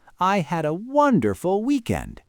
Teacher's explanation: If the word is wonderful, the pitch has to jump up.